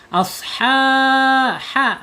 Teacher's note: Ha ya, ha ada di tenggorokan tengah ya, jangan asha, awas ingat, jangan pakai asha, tapi ya. Makhrajnya ada di tenggorokan tengah, kemudian sifatnya ada di al-hams ketika dia sukun ya, gitu mengalir.